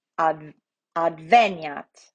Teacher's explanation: our accent goes to the antepenultimate, the E